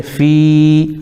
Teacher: فا کے نیچے زیر لیکن یا ساکن تو یا مدہ ہو جائے گا